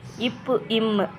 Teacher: மேல் இதழும் கீழ் இதழும் பொருந்துவதால் பிறக்கிறது